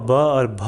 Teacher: ये तो कंठ्य ध्वनि नहीं हो सकती, क्योंकि इसमें जो है हमारे ओष्ठ बंद हो रहे हैं, तो ये ओष्ठ्य हो सकता है।